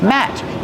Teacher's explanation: The letter T at the end of the word Matt is a stop T.